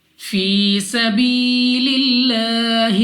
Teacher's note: तो 2 सेकंड तक या मद्दा को, अलिफ मद्दा को, वाव मद्दा को, तीनों को जहां पे भी आए आपने 2 सेकंड तक खींच कर पढ़ना होगा। यहाँ पे हम या मद्दा को 2 सेकंड तक खींच कर पढ़ेंगे।